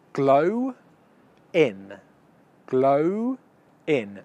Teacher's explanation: so the vowel sound that's finishing the first word is oh it's a diphthong and the vowel sound that's beginning the second word is it